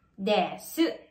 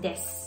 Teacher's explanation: Kung mapapansin nyo, may vowel devoicing ulit. And that is yung word na desu. Kung babasahin natin, para siyang desu.